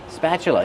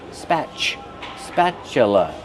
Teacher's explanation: Use the short A sound like black cat, spa, plus the ch sound like chicken.